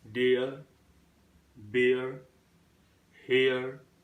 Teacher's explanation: Last R sound, as it is coming after vowel sounds, that is why this R sound is not pronounced in British English